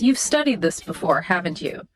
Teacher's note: That haven't you, up it goes.